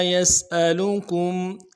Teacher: یسألو میں سین کو واضح کریں گے سیٹی والا حرف ہے حمزہ کو بھی نرمی سے ادا کریں گے اور کم میں میم ساکن ہے اظہار کے ساتھ پڑھیں گے